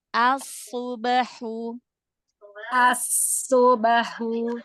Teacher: Hamzah wasalnya tipiskan dulu.